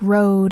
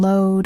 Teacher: For R, the tongue pulls back without touching the top of the mouth. For L, the tongue touches just behind the upper teeth.